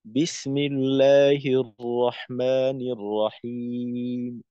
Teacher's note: যেমন ধরেন বিসমিল্লাহির রহমানির রহিম, এই উচ্চারণটা খুবই ছোট, খুবই ছোট, একেবারে পরিপূর্ণভাবে মি না বলে মি- একেবারে ছোট 1/3 অংশ মি এর উচ্চারণ করা যায় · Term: অকফুবির রৌম